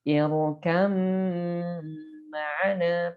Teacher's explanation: Jadi bukan irkab ma'ana tapi dibacanya irkam ma'ana disertai gunnah karena ada mim.